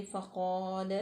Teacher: लाम जो है उसको बारीक पढ़ेंगे, मोटा नहीं पढ़ेंगे।